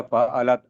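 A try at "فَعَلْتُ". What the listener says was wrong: फ़अला तू नहीं है, फ़अल तू है। अल अल तू, फ़अल तू, फ़अल तुम।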